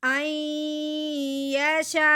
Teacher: اب مد متصل کو ہم نے 4 الف کے برابر لمبا کرنا ہے